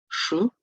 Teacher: звук ш він приголосний глухий і твердий